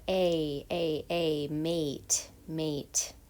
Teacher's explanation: it's a tense vowel your lips are spread they're tense